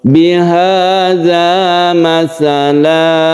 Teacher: ini yang dinamakan dengan mad iwad iwad itu artinya ganti yaitu tanwin diganti menjadi Mad itu Mad Iwat yang panjangnya satu Alif